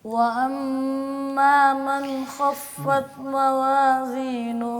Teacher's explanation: میم نون کے بعد حروف حلقی ہیں، پھر یہاں پہ اظہار کرنا ہے